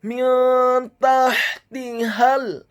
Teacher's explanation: Huruf nun yang sukun bertemu dengan huruf ta yang fathah. Hukum bacaannya adalah ikhfa, dibaca secara samar-samar. · Kemudian kata tahtihal, huruf ta-nya dibaca tipis tarqiq fathah 1 harokat. Huruf ha-nya dibaca sukun tipis atau tarqiq nyaring dan halus. Selanjutnya huruf ta yang kedua dibaca tipis kasrah 1 harokat.